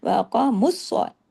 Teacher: پہ آئے باریک ہو گیا، عامل الصالحات، پھر دیکھیے اقام الصلاۃ، قاف کے اوپر پھر آپ کا منہ اوپر نیچے کھلے، قاف کو ہیوی کرنا ہے